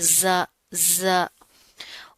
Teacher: زا کے اندر سختی پائی جاتی ہے، مضبوطی سے اس کو ادا کریں گے، ٹھیک ہے؟ سیٹی ہوتی ہے اس میں